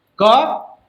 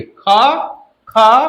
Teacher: क जल्दी से बोलते रहे, लेकिन ख समय ज्यादा लग रहा है। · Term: महाप्राण